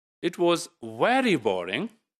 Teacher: so the very is emphasized here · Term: emphatic stress